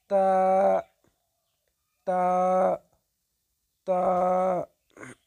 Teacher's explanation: জিহ্বার আগাটা উপরের দুই দাঁতের গোড়ার সঙ্গে লাগিয়ে উচ্চারিত হবে